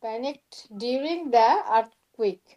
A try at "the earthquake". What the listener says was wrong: দা হবে না, দি হবে, ভাউল সাউন্ড।